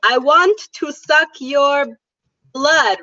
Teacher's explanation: if we want to make a vampire accent, we will change all of the W sounds to V sounds. So instead of making the W sound, we say V.